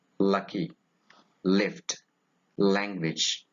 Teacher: it is a voiced alveolar lateral